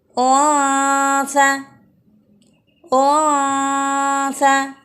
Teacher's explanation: Ditempelkan dengan ringan pada posisi makhraj sa sehingga berbunyi unsa. Masih ada dengung di hidung dan ada sedikit udara di mulut. Mulut tidak tertutup karena lidah kita tidak menekan pada huruf sa, namun menempel dengan ringan. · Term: ikhfa awsat